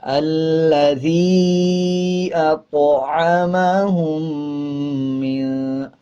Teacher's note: جب طا کے اوپر جزم آ جائے تو قلقلہ کرتے ہیں اور طا موٹے حروفوں میں سے آتا ہے